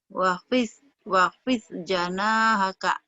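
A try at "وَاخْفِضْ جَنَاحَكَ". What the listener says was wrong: Wahnya jangan buru-buru. Wakhfid janahaka. Wakhfid.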